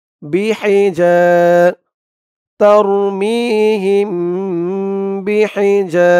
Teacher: ইকফা কারণ মিম সাকিনের পরে পরের লাইনে দেখুন বা আসছে তাই মিম সাকিনে ইকফা গুন্না হবে গুন্নাটা নাকের ভিতরে লুকিয়ে করতে হবে